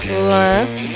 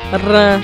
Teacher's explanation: Mas a língua treme na boca quando fala rã. Porque o rã, ele é vibrante.